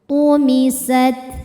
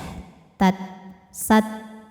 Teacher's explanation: huruf ta dari segi suara sifatnya syiddah, tat, sat. Dari segi angin sifatnya hamas, sat.